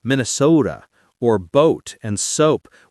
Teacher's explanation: You'll hear people say Minnesota or boat and soap with a very pure rounded O. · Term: elongated O sound